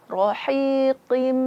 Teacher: Kasratain, tanwin berjumpa dengan mim, maka hukumnya idgham bi gunnah, memasukkan dengan ada gunnah, dengung.